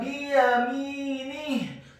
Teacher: Kitabahu biyaminih, kata biyaminih, huruf ba-nya dibaca tipis kasrah 1 harokat, huruf ya-nya dibaca tipis fathah 1 harokat. Kemudian huruf mimnya dibaca kasrah 2 harokat karena setelahnya ada huruf ya sukun, huruf nunnya dibaca tipis kasrah 1 harokat, dan di akhir ayat huruf ha-nya dibaca sukun dan dibaca tafkhim atau tebal.